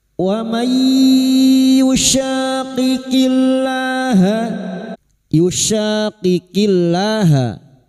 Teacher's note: maka masuk dengan mendengung, masuk pada huruf ya dan mendengung selama 3 harokat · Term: idgham bi gunna